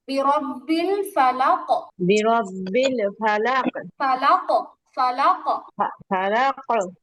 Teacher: আর কফের কলকলা হবে জবরের মতো, কফ জবর ক হয়, কা হয় না।